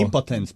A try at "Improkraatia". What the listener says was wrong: Improv, not impo.